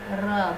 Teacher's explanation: जिस उच्चारण में जीवा को 2-3 बार कंपन करना पड़ता है। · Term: प्रकंपित